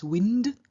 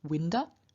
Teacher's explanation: The nasal that is added here is n, because in front of d, which is a dental stop, we enter the dental nasal, giving us wind, and then we add a to give us winda.